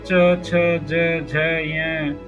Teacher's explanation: तालव्य वर्ण वे होते हैं जिनका उच्चारण जीभ के तालु से स्पर्श करने पर होता है।